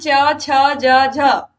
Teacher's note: इनको बोलने में जो हमारी जीभ है वो तालू से हमारे सट रही है इसलिए इनका जो उच्चार स्थान है वो तालू है इसी प्रकार